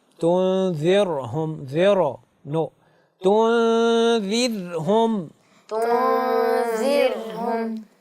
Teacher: را کی ادائیگی میں قلقلہ نہ ہو